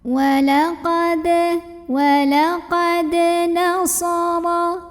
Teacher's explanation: Maka cara membacanya, ra-nya ini dibunyikan secara tebal, pangkal lidah kita terangkat. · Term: tafkhim